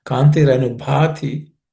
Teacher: the Bha is again aspirated because the fourth letter in the Pa Varga, Pa class, just be aspirated.